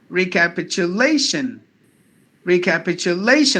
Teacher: word recapitulation only the this word lay one two three four fifth syllable is given more volume than the other syllables